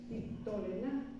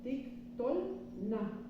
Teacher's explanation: si sobre la vocal larga recae el acento el shev que sigue no se pronuncia entonces por eso aquí se lee titic y este sh no